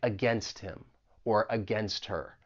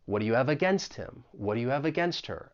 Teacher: elision is when you remove uh a certain sound or even syllable so in this case we're talking about that H in him or her and if it gets removed well then we can link that